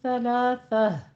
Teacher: सलासा में बिल्कुल नरमी के साथ पढ़ना है, सा में सीटी की आवाज़ नहीं आनी चाहिए